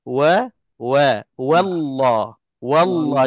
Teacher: W wau berbaris atas tu jadi cara sebutannya haruslah nipis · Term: baca nipis